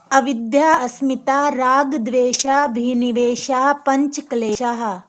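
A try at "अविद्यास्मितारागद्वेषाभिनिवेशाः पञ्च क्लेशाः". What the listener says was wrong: Good, ठीक है।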